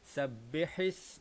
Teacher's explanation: kita kena tekankan huruf ha ini seolah-olah kita sedang membaca ha yang pedas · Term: ha pedas